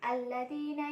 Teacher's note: alif lam syamsiah, yaitu dibaca idgham atau masuk ke huruf lam